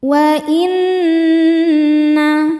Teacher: Nun dihukumi gunnah musyaddadah karena nun bertasydid. Cara bacanya berdengung, dengungannya tahan kurang lebih 2 harokat.